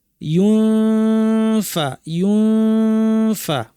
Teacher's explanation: যেভাবে ছবিতে দেখা আছে দেখানো আছে পরিপূর্ণ চাপ দিবো না হালকা করে লাগাবো অথবা কাছাকাছি নিয়ে আসবো তারপর নাক থেকে গুন্না করব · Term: ইখফা